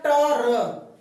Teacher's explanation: र के उच्चारण में हमारी जीभ वाइब्रेट करती है, हमारी जीभ कंपन करती है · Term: प्रकंपित